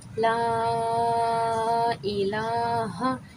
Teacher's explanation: لام کے اوپر کھڑا مد ہے تو اس کو 3 سے 4 مقدار کھینچیں گے۔ یہاں پہ کھڑا زبر ہے، اسے ایک الف کی مقدار کھینچنا ہے۔